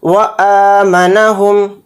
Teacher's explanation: حمزہ کے اوپر کھڑا زبر ہے، اس کو حمزہ کو تھوڑا کھینچ کر پڑھیں گے جو الف کی شکل میں ہے.